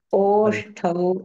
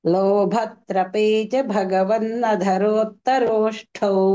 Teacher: అది ఓష్టౌ కాబట్టి కొంచెం మహాప్రాణంగా